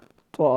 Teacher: زبان کی نوک کو اوپر والے دانتوں کی جڑ کے ساتھ لگائیں گے تو طا ادا ہوگا